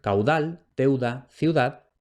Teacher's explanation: la B implosiva se va a resolver vocalizando en U, es decir, transformándose en una U y formando diptongo con la vocal anterior en la mayoría de los contextos